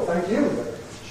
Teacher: Two accents, thank you. First one's the head, second one's the nucleus.